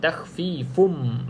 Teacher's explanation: pastikan kalau jumpa mim yang bersabdu pastikan mulut mulut bibir tuan-tuan dan puan-puan tu bibir atas dan bibir bawah rapat rapat dan tekankan sedikitlah